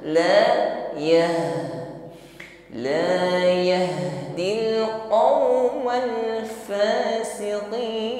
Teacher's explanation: huruf ha sukun rakhawah, alirkan bunyi hurufnya, ya, bukan la yahdil qauma.